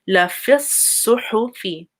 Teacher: So this fa goes straight, even though there's a ya, it goes straight to the sad. So this ya is cancelled. Don't make it long.